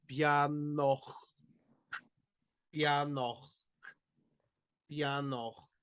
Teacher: But then in the other word, bianoch, that's where we've got a broad CH sound, so you can feel it right here in the back of your throat.